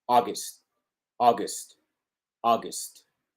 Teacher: con la primera sílaba acentuada tenemos contraste con la segunda que es breve, breve, breve, breve, ¿ok?